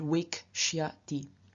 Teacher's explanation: In front of the sya, the sh at the end of wesh changes into k, so we get wake.